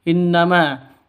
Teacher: Artinya gunnah musyaddada, dengung 2 ketukan atau 3 ketukan dengan hurufnya. Begitu. Terus innama, ma panjang 2 ketukan karena ada alif diawali dengan fathah mad asli.